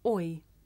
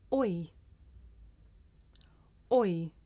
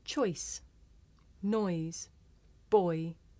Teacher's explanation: this is a diphthong a double vowel sound the shape the mouth makes changes from the beginning of the word to the end